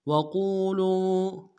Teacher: قاف کو موٹا کرتے واؤ کے ساتھ ملانا ہے، واؤ مدہ ایک اعتدال میں کھینچیں گے